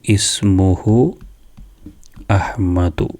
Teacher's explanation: ചേർത്തി ഓതുമ്പോഴും അതേപോലെ തന്നെ തുടങ്ങുമ്പോഴും ഉച്ചരിക്കുന്ന ഹംസയാണ് ഹംസത്തുൽ ഖത്ത്. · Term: ഖത്തുവിൻ്റെ ഹംസ